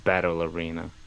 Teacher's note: I would stress battle more than arena.